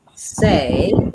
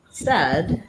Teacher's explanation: the word say is going to have the A gray day vowel, but the word said is going to have the eh red tent vowel